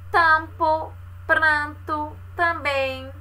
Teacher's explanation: vê que um pouco do barulho sai pelas vias nasais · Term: vogais nasais